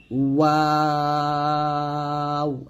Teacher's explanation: ওয়াও দুই ঠোঁট মিল হবে না, ঠোঁটের মাঝে ফাঁকা থাকবে